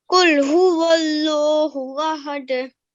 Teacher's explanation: when you're starting the lam sound, it has to be thick, okay, or rounded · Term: majestic lam